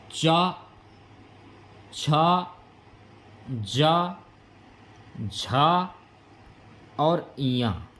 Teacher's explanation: चा, छा, जा, झा और इया, ये आपके तालु वाले वर्ण हैं